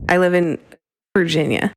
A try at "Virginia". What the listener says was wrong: oh yeah you definitely say an F